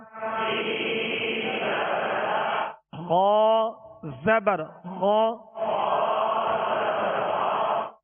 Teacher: سین زبر سا غا زبر غا. غا کو پر کیوں پڑھیں گے؟ حروف مستعلیہ میں سے